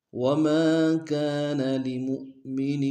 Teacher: وما میں الف مدہ ایک الف دار میں کھینچے گے، کاف میں الف مدہ اس کو بھی ایک الف دار میں کھینچے گے، لمؤمن میں حمزہ کو واو کے سامنے آئیں گے، جھٹکا دیں گے اور نون کے نیچے تنوین غنہ کریں گے۔